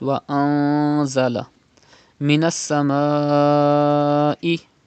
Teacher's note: You can see za after noon sakin. Za is from ikhfa letters, so the rule ikhfa will be done in noon sakin and gunna will be done.